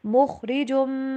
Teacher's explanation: خواہ کو موٹا کر کے پڑھنا ہے، ایسے خواہ کے اوپر آواز کو ہلانا بھی نہیں ہے